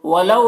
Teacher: یہاں پر واو لینے سے نرم آواز کے ساتھ جلد پڑھیں گے